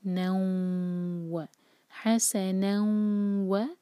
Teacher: आनी चाहिए, हस, और नून पर जो है तनवीन है स्लाइडिंग, उसके बाद वाव है, तो हम नून को वाव से जोड़ेंगे